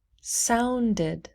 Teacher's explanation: sound ends with a d so we say did